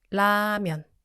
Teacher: Because the 리을 sound in Korean is made by touching the tip of your tongue to the ridge behind your upper teeth. So it's a bit like an English R, a bit like an L, right in the middle. So don't roll it back like an English R, and don't pronounce it fully like an L either.